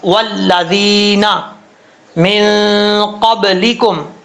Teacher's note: یا مدہ ایک الف کی مقدار لمبا کر کے پڑھا جائے گا۔